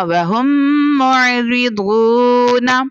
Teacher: اب یہاں پر میم ساکنہ کے بعد دوسری میم تھی، ادغام شفوی ہو گیا، یعنی غنہ کر کے پڑھا